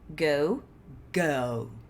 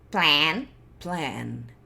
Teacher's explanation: Eu fiz o mesmo som de vogal na garganta. O que alterou esse som de vogal foi a posição do meu maxilar.